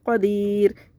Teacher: وقف کی صورت میں را کا پیش حذف ہو جائے گا اور ساکن ہو جائے گا، تو ہم اس کو پڑھیں گے قدیر۔